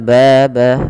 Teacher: Fathah bertemu dengan alif panjangnya dua harakat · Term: mad thai